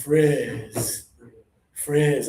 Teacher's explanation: Because it has a letter I, not an EE, your tongue is going to be lower and more air.